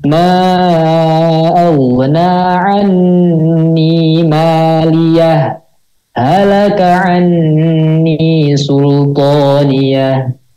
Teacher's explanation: Disaktah itu kalau sakta kan berhenti sejenak tanpa mengambil napas